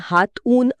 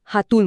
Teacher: जेव्हा आपण हे वेगाने बोलतो तेव्हा आपण हात ऊन असं तुटक बोलत नाही आपण थेट हातून म्हणतो